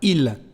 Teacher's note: no se escucha la S final cuando se pronuncia de manera aislada